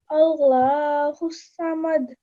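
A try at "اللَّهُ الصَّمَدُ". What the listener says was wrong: ایک بار اور اللہ کو پر کر کے، اللہ کا نام جب آئے تو پہلے فتح ہے اللہ الصمد.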